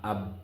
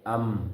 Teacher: যে উভয় টুট মিলাইয়া বা ও মিম উচ্চারিত হয়। যেমন বা আব মিলে গেল উভয় টুট আম মিলে গেল উভয় টুট তাহলে বার মিম উভয় টুট মিলাইয়া উচ্চারিত হয়।